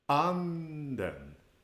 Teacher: you start at a higher pitch and you end up on a lower pitch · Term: acute pitch accent